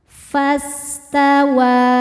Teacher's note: Fas sinnya berdesis seperti suara ular karena punya sifat namanya shofir